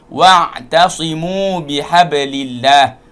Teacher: ain makhrajnya di bahagian halkum, tengah halkum. Wa'tasimu, caranya buka mulut dua sikit.